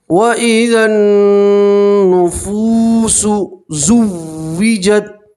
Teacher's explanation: ٹھیک ہے، نون کے اوپر تشدید ہے، آپ نون میں گننا کریں گے. نون کی آواز کو 2 سیکنڈ کے لیے آپ کو ناک میں روکے رکھنا ہے